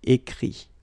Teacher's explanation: Remember that phonetically this final T doesn't exist. Okay? So the sound will be only this I.